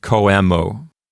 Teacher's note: So the question of what syllable gets the accent is really a lesser issue. The main issue at stake here is to not pronounce the O and the E as a diphthong.